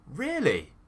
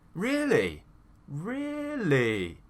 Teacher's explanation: And that would be my reaction to show that I am excited or happy. So when we do this up, down, okay, rise, fall tone, really, that shows that we are very excited or we have some kind of emotion. Okay, so it's an emotional tone that we use in English.